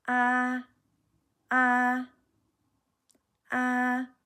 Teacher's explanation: As long as it's higher than your other tones, then you're fine. So the first tone is high and flat. · So my sound is not going up or down.